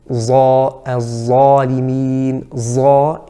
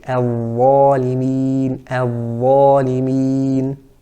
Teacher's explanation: The third point we want to talk about is some of the common errors with the dha, the dhal and the tha. The first common error with the dha is mixing it with a bit of a zai sound.